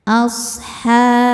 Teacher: shadnya berdesis karena punya sifat namanya shofir ya. Yaitu berdesis seperti suara angsa.